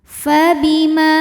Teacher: ke [Musik] auzubillahiminasyaitanirrajim Bismillahirrahmanirrahim fabima Ma hukumnya adalah Mad Thobi'i dahohiri sebab ada Alif didahului baris fathah maka huruf mim ini kita panjangkan dua harakat saja